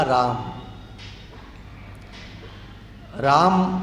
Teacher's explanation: राम इतना बोलने से मा हल हो जाता है और अनुस्वार के रूप में परिवर्तित हो जाता है। उसको आप अगर मां लिखेंगे तो नीचे एक कहते हैं इसकी टांग तोड़ दी गई अक्षर की नीचे डंडा कर दिया जाता है।